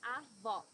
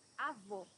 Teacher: Here you need to hear the sound of the last O in the syllable. It should be an open O, as we say in Portuguese.